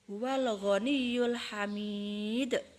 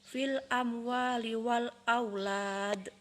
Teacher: cara membaca qalqalah kubro adalah dibaca terang dan memantul karena dia berada di akhir kata